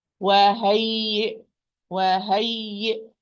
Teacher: the ya with shadda having nabr or stress, and this will come naturally if you give the first ya it's رخاوة or being a loose letter.